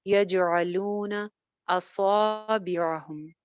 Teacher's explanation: आइन नरमी के साथ जुबान पीछे भेजते हुए